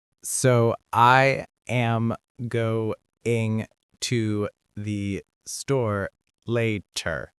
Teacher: He spoke every word with equal stress and in the same slow, measured tone.